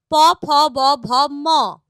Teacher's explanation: এদের উচ্চারণ স্থান অষ্ঠ আর অধর অর্থাৎ উপরের ঠোঁট নিচের ঠোঁট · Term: অষ্ঠ ব্যঞ্জন